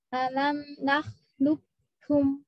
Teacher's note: alam nakhlukum seperti kaf dua kafnya hilang.